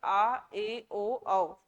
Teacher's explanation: क्या होगा, मुख जो है, मुख जो है कैसा होगा, मुख द्वार आधा खुला होता है। जब आप उच्चारण करते हो तो मुख द्वार कैसा रहेगा, आधा खुला रहेगा। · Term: अर्ध विवरित स्वर